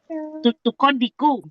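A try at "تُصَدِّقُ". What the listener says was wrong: Kenapa tukadiku itu sadi? Tusadiku.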